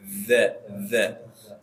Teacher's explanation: kalau za itu ujung lidah nempel ke gigi bagian atas depan